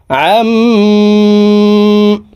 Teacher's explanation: মিম জবর আম হরকতের বামে মিমের উপরে তাসদি আছে এই কারণে এই আইন হরফ মিমের সাথে নাকের বাঁশি থেকে তিন সেকেন্ড পরিমাণ গুন্নাহ করে ধরে রাখবো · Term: ওয়াজিব গুন্নাহ